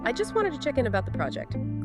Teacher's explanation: Clear, direct statement, generally fall intonation.